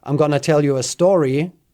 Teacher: you expected a continuation based on me staying at a high level pitch at the end